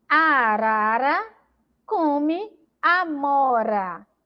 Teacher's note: a letra re entre vogais vai ter um som vibrante